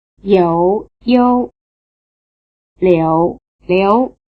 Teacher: you hear something approaching the simple oo sound after the semivowel in the first and second tone names